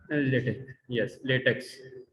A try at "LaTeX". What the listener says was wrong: Do you remember the correct pronunciation is LaTeX? LATEK. Do not pronounce the X fully, please. This is LaTeX.